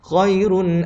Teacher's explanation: kita baca dengan tebal pada huruf ro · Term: tafkhim